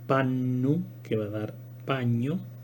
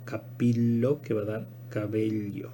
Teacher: Entonces esta doble N va a dar el sonido palatal, y esta doble L va a dar el sonido palatal.